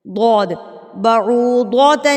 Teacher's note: زبان کا کنارہ ہے وہ اوپر کی طرف اٹھ کے اوپر والی داڑھوں کے ساتھ جب لگتے ہیں تو ضاد کی ادائیگی ہوتی ہے